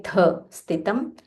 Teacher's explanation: Tha is Mahaprana, so you have to say tha, sthitam.